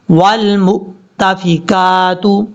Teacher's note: میم کو جب حمزہ کے ساتھ کنیکٹ کریں گے تو یہ حمزہ جھٹکے کے ساتھ پڑھا جائے گا